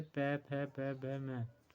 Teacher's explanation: जिन वर्णों के उच्चारण में दोनों ओष्ठों द्वारा श्वास का अवरोध होता है, ओष्ठ व्यंजन कहलाते हैं, जैसे प, फ, ब, भ, म।